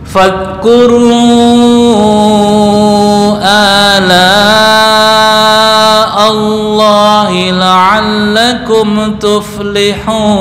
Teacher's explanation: Fadhkuru sebentar, zal enggak boleh qalqalah